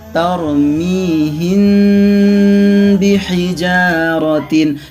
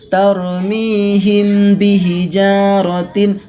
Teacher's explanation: mim sukun bertemu dengan huruf ba maka itu namanya Ikhfa Syafawi cara membacanya harus samar-samar di bibir dan didengungkan